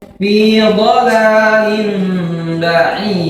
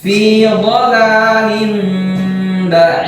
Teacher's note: Dikatakan dengan iklab, yaitu ketika ada tanwin bertemu dengan huruf ba, itu huruf iklab, ya, maka dia dibaca dengan dengung